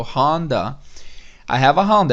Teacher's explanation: Um som mais entre A e O.